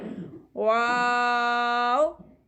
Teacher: आपने ऊपर वाले टीथ को लिप्स के साथ टच नहीं करना, नीचे होंठों को गोल करके रीड करना है इसके। मुंह की जो खाली स्पेस होती है, मुंह में जो स्पेस होती है वहां से ये रीड होता है।